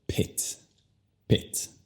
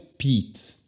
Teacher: Luego con su apellido, ya que la vocal no es enfatizada o fuerte para nada, la vocal se convierte al sonido schwa y tú dices Pitt. Pitt. No es Pete.